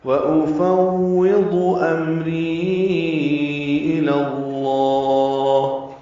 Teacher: واو ہونٹ کی نا تمام گلائی سے ادا کریں گے